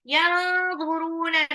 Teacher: nun sukun ketemu dha, nunnya itu samar